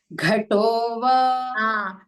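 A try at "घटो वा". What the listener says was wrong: The first time the Mahaprana was heard to the Tha also. It should be only to Gha.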